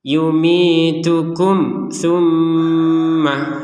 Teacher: Nah, ini kum su. Antara kum dengan su itu kan jelas. Ya, tidak ada samar, tidak ada dengung. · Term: dibaca jelas